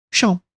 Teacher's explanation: onde o n foi embora para deixar a nasalização pra vogal